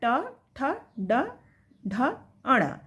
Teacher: ट वर्ण में ट ठ ड ढ अण इसको हम मुर्धा कहते हैं मुर्धा वर्ण